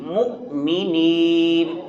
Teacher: مؤمنین حمزہ ادا کریں گے، مومنین نہیں